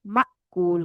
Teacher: साकिन हमजा जो है उसको झटके से पढ़ते हैं उसको खींचते नहीं है माकूल नहीं करना इसको माकूल करना है इसको झटका देना ठीक है? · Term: झटके वाला हमजा